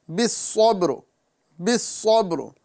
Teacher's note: را کو جب بھی آپ ادا کریں تو اس میں ہلکی سی تکرار ہوں گے، ٹھیک ہے، یعنی را پر جب سکون ہوتا ہے، جزم آ جاتا ہے، وہاں پر جب ہم اس کو ادا کریں گے بالصبر، یعنی اس میں مثل تکرار ہوگی، زیادہ تکرار کریں گے تو کئی را ادا ہو جائیں گے۔